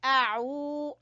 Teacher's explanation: आइन को गले से अदा करेंगे, आऊ और खींचेंगे वाव मद्दा की वजह से